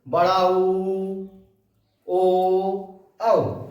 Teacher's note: बड़ा ऊ, ओ, औ, तो इसमें ओंठ गोल आकृति के हो जाते हैं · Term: वृत्तमुखी स्वर